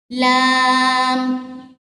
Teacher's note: जुबान का किनारा किसको बोलते हैं, जो नोक से थोड़ी सी पीछे जगह होती है ना, उसको बोलते हैं जुबान का किनारा। जुबान का किनारा ऊपर के सामने वाले दांतों के मसूड़ों से लगे, दांतों के पीछे वाली जगह से थोड़ा सा पीछे, उसको बोलते हैं मसूड़े, वहां पर टच हो तो ये वर्ड अदा होगा लाम।